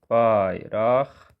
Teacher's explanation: Baxın, bayraqlarda lar olduğu kimi qalır. Bir dənə q burda x-yə keçir.